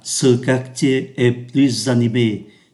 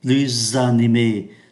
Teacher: Câu A, ce quartier est plus animé. Chúng ta thấy chữ PLUS đứng trước một từ mở đầu bằng nguyên âm thì chúng ta phải đọc nối